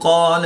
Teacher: ما قبل حرف یعنی پہلے والا حرف قاف حروف مستعلیہ میں سے ہے، تو اس لیے یہاں پر الف پر یعنی موٹا پڑھا جائے گا